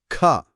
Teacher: గట్టిగా ఒత్తి పలకాలి. ఖ ఓ అవును ఖ అన్నప్పుడు చేతికి గట్టిగా గాలి తగిలింది. ఆ అదనపు గాలి ఆ ఒత్తిడి అదే మహాప్రాణం.